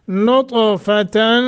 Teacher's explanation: नून तनवीन के बाद फ़ा इख्फा करेंगे।